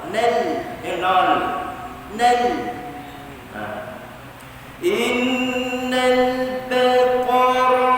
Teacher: ba infitah, qa tafkhim, qa kita bagi isti'la, ra tafkhim